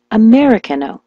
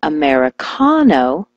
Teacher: switch the stress to the ka